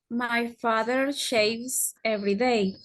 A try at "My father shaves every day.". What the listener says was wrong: That's perfect.